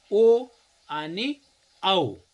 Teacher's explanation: कंठ अधिक ओठ यांचा उपयोग करून जे वर्ण उच्चारले जातात त्याला कंठोष्ठ्य म्हणायचं.